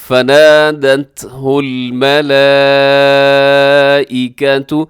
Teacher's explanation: سب سے پہلے فنادته الملائکۃ، یہاں الملائکۃ اس کے اوپر جو مد ہے یہ مد متصل ہے، بڑی مد ہے اور واجب بھی کہتے ہیں اس کو، تو ضرور لمبا کیجیے گا 4 سے 5 سیکنڈ تک